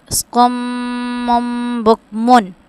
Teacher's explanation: ہم نے میم مشدد والا غنہ بھی کرنا ہے اور با آ رہا ہے، تو یہاں پہ ایک لاب کی صورت میں ہم غنہ کریں گے.